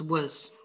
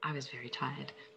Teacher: What happens to was? How do you pronounce it when you say it naturally? Yeah, it becomes the schwa.